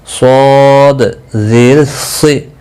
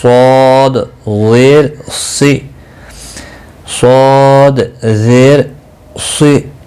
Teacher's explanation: صاد زیر سی، مستعلیہ ہے، پور پڑا جائے گا۔